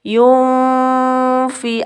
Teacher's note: nunnya ini bukan yun dibaca lama, tetapi nunnya diarahkan ke fa, mukharijul hurufnya fa, mau bunyi fa begitu, dilamakan dulu, disamarkan. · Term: ikhfa hakiki